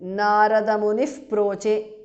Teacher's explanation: visarga changes to upadhmaniya